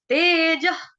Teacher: विसर्ग का उच्चारण मैंने ह के साथ किया।